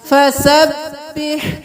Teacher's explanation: ہا کو بالکل گلے کے درمیان سے